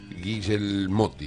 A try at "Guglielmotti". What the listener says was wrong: Sí, se te escapó una I, es Guglielmotti, pero